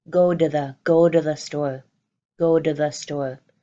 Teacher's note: And then this phrase of go to the store becomes this really contracted, this really shortened up, go to the store, go to the store. Both of the T's, the to and the, they become held in, softer sounds of the D.